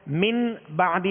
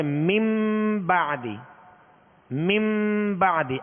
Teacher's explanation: اب یہ حرف با میں صرف نون ساکن یا تنوین کے بعد حرف با آئے گا تو اقلاب ہوگا، بدل دیں گے، نون ساکن اور تنوین کو میم سے بدل کر غنہ کریں گے، جیسے من بعدی، من بعدی، میم نون زیر من، با عین زبر با، من بعدی۔